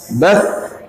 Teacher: Bas di sini keluar dari ujung lidah dengan ujung gigi seri atas kita.